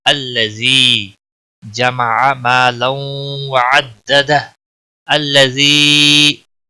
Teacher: یا مدہ ہے، 1 الف کے برابر کھینچ کر پڑھیں گے